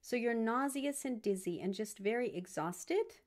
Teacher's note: You can add in rising intonation to invite a response.